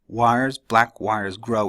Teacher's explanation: all stressed in a row so it doesn't have that regular unstressed stressed Rhythm